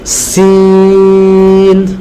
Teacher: জিহ্বার আগাটা ঠিক নিচের সামনের দুই দাঁতের গোড়ার সাথে লাগিয়ে বলতে হবে